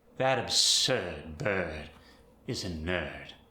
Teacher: There's the medial and the terminal R drop.